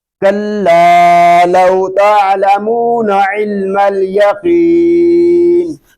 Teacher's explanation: قاف حروف مستعلیہ میں سے ہے، اس کو پوری یعنی موٹا پڑھیں گے